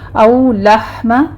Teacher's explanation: او لحم لح ہا وسط حلق سے ادا کریں گے اس پر حمز ہوگا.